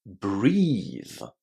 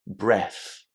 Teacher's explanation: So, not only is there a long E inside this word, but also the letters TH in that ending are pronounced in a voiced way, exactly in the same way to how we pronounce TH in the word this or though.